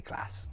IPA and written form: klæs (class)